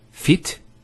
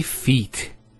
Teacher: There's an elongation of the E sound.